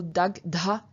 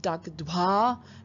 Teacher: this gh passes on its voice and aspiration to a following t, to change that into dh. Then the gh, the original gh, loses its aspiration, so it becomes just a g.